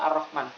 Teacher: ketika kita membaca roh getarannya itu hanya satu kali tidak boleh lebih dari satu kali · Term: taqrir